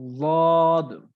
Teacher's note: এটা হলো দ মানে একটু মোটা করে পড়তে হবে